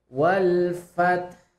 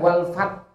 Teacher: Lihat H-nya tetap mengalir, Pak.